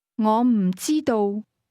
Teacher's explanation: don't know is pronounced with a combination of falling high and mid-level tone